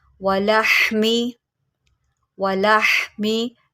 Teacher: हा को आप निकालेंगे हलक के दरमियान से।